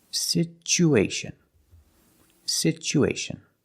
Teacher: so the T makes a CH sound like chicken situ situation because there's no stress on the U we change the T to the CH sound